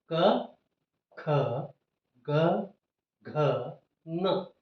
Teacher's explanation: ಈ ಉತ್ಪತ್ತಿಯಾದ ಧ್ವನಿ ನೇರವಾಗಿ ಗಂಟಲಿನಿಂದ ಬಾಯಿಯ ಮೂಲಕ ಗಳ ಮೂಲಕ ಹೊರಗಡೆ ಬರುತ್ತೆ ಈ ಕ ವರ್ಗದ ಐದು ಅಕ್ಷರಗಳು ಕಂಠದಲ್ಲಿ ಉತ್ಪತ್ತಿಯಾಗುತ್ತೆ ಹಾಗಾಗಿ ಇದನ್ನು ಕಂಠ್ಯ ಅಕ್ಷರಗಳು ಅಂತ ಕರೀತೇವೆ · ಕವರ್ಗದ 5 ಅಕ್ಷರಗಳನ್ನು ಉಚ್ಚಾರಣೆ ಮಾಡುವಾಗ ಗಂಟಲಿನಲ್ಲಿ ಉತ್ಪತ್ತಿಯಾದ ಶಬ್ದ ನೇರವಾಗಿ ಎಲ್ಲೂ ಅಡೆತಡೆ ಇಲ್ಲದೇನೆ ನೇರವಾಗಿ ಬಾಯಿಯಿಂದ ಹೊರಗಡೆ ಧ್ವನಿ ಉಸಿರಿನ ಜೊತೆಗೆ ಬರ್ತದೆ. ಹಾಗಾಗಿ ಇದಕ್ಕೆ ಕಂಠ್ಯ ಅಕ್ಷರಗಳು ಅಂತ ಕರಿತೀವಿ.